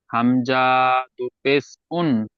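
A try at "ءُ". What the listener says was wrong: হবে না, হামজা টান হবে না, হামজা দু পেশ উন।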